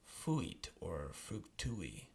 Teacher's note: there's a vowel combination UI that is not normally a diphthong. Normally it sounds like UI, like fuit or fructui.